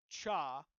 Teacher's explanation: And then are africates which are formed when you um basically start with a stop but then move to a fricative